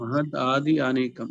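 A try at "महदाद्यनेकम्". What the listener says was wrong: Adyanekam. You have to club the Y and A. Adyanekam.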